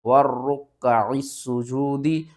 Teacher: واؤ کو را کے ساتھ ملانا ہے، درمیان میں الف اور لام کو چھوڑ دینا ہے، پھر اس را کو کاف کے ساتھ ملانا ہے، کاف کے ساتھ جو زبر ہے پھر اس کو پڑھنا ہے، پھر اس عین کو ہم نے سین کے ساتھ ملانا ہے، سین کو ہم نے سیٹی کے ساتھ پڑھنا ہے، 2 بار پڑھنا ہے اور سختی کے ساتھ پڑھنا ہے